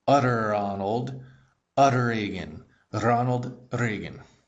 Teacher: When you say utter in English, your tongue bounces off the roof of your mouth. So super slow to do the R it would be utter Ronald utteran Ronald Reagan.